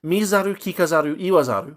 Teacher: But if you make it like a suffix, and this is common, if you make a word a suffix of like another part of another chunk of word, especially a verb, you'll often convert like the unvoiced consonant to a voiced one. So sa becomes za.